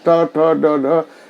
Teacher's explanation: मूर्धन्य मतलब ऊपर तालु को स्पर्श करता है। तालु के आगे का भाग मूर्धन्य, ट ठ ड ढ, एकदम तालु के आगे का भाग, दांत के जस्ट पहले का भाग, उसको मूर्धन्य बोलते हैं।